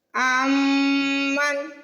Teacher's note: امن میم پہ تشدید ہے تو میم پہ غنہ کریں گے۔ امن غنہ مطلب ناک میں آواز لے کے جانا اور تھوڑی دیر لگانا۔